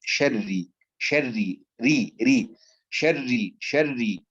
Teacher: الراء مرققة خالصة، يعني أريد راء مرققة لأنها مكسورة، حتى وإن كانت مشددة فهي مكسورة، فترقق خالصة كاملة دون أن تفخم الأولى من المشددة وترقق الثانية.